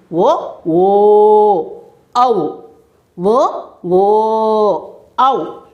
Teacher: కంఠం నుంచి పెదవుల ద్వారా పలుకబడే అక్షరాలు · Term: కంఠయోష్టియాలు